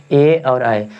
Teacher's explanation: कंठ और तालु से बोला जाता है